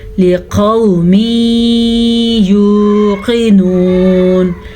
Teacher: کو لمبا نہیں کرنا کیونکہ لام کے نیچے زیر ہے اور یہ ہمارے پاس واو لین ہے، نرمی سے پڑھا جاتا ہے، بغیر کھینچ کے پڑھا جاتا ہے